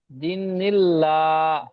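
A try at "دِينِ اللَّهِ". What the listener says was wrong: দি টান হবে, দি নীল্লা, দি নীল্লা, হাজেরিহি, দি নীল্লাহি, দি নীল্লাহি।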